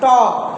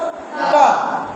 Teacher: तो आप देखिएगा हमारा जीभ मुड़ जाता है